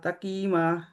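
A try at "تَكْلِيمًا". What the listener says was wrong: तकलीमा। तकीमा नहीं है, लाम है, तकलीमा।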